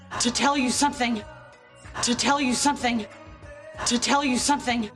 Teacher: The up-down shapes of stress on tell and some.